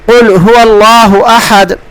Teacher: مثال دی ہے انہوں نے، مثال قل هو اللہ احد، اس کا معنی ہے کہو اللہ ایک ہے۔ اگر آپ قل کے قاف کو اس کے صحیح مخرج سے پر کر کے ادا